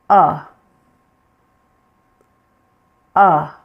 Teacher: Open your mouth somewhat, not so big, but just just a little midways. Your tongue is low and it's in the middle. So you want to pull it back a little bit from your front teeth. · So you want to pull it back a little bit from your front teeth. And your sound will be short and low pitched. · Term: schwa sound